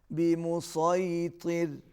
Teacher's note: صاد بھی موٹا اور تو بھی موٹا